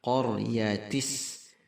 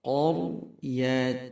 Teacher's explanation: Ini disebut dengan nun wiqayah, nun penyambung, jadi tidak dibaca qaryatis tetapi qaryatinis. Qa-nya tebal, kemudian ra juga tebal.